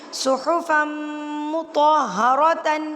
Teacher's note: ادغام جو ہے وہ غنہ کے ساتھ، جیسے ناک میں آواز لے کے جانی ہے